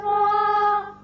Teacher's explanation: را کو پر کر کے پڑھا اس لیے کہ کھڑا زبر الف ہے آگے